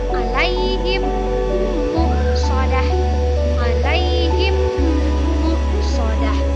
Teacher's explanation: ketika huruf mim mati bertemu lagi dengan mim, maka cara membacanya adalah dengan berdengung. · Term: idgham mimi